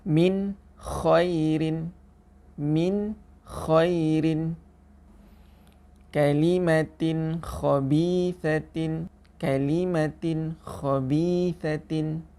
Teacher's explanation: Untuk tanwin, contohnya kalimatin khabisatin. Apabila bertemu dengan huruf kha, maka bacaannya juga adalah tidak dengung.